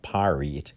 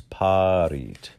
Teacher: all of the r's are gently flipped